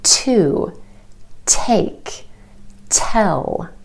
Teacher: the letter T it's it's clear it's concise it's distinct it's made by taking your tongue tip and tapping it on the ridge behind your top Front Teeth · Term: true T